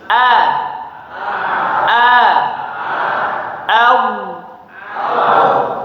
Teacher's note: Yang tebal huruf d. Huruf hamzah a-nya tipis.